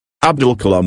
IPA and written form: ˈæbdʊl kəˈlɑːm (Abdul Kalam)